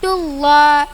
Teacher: Dullah lam jalala tafhim. Lafaz Allah didahului damah tebal bacanya.